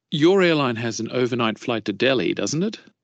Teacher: thì mình sẽ lên giọng vào chữ it nè các bạn ha.